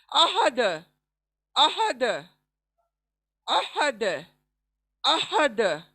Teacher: हा आया, हालांकि बीच सेंटर ऑफ द थ्रोट से निकालना है।